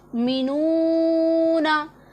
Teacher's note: आगे वाव मद्दा है, इसे भी एक अलिफ के जितना हमने लंबा करना है।